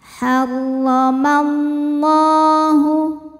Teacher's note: Lam jalalah dibunyikan secara tafkhim karena huruf sebelumnya berharokat fathah, maka lamnya tebal.